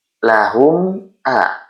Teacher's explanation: Cara bacanya cukup dengan menyebutkan mim sukun saja dengan jelas. Jangan ditahan lama-lama. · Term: idhar syafawi